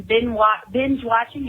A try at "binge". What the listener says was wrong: Binge. You said bin.